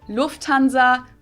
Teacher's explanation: people usually say Lanza but in German we say Lanza so the emphasis on the first syllable